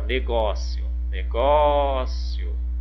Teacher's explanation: foi a penúltima então paroxítona